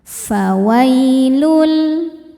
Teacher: wai ada harfulin sebab ada ya sukun sebelumnya baris fathah. Cara bacanya lembut atau lunak.